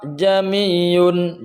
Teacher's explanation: Ini ada 2 hamzah yang kumpul, itu bacanya tashil. Tashil di sini ialah dibaca nyambung, dibaca 1 hamzah. jamiyun. Jadi hamzah yang pertama itu hamzah, hakikat hamzah.